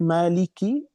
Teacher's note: mad tabi'i 2 harakat